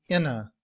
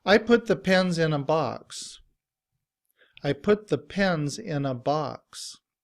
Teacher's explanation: In reduced form, we don't say a. We would use the sound of the schwa, which is the upside down E, And when we combine that with the word in, we just say inna.